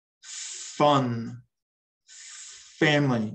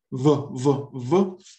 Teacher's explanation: For F, you breathe out, and V, you have a vibration in your throat. Either way, touch your top teeth to your bottom lip and try that again.